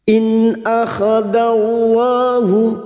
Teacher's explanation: lam jalalah yang didahului fathah kita baca tafkim atau tebal